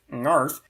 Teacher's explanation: a syllable that starts with a velar nasal